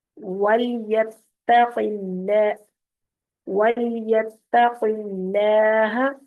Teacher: اب یہاں پر قاف کو موٹا رکھیں گے اور اللہ کے نام کو باریک پڑھیں گے کیونکہ قاف کے نیچے زیر ہے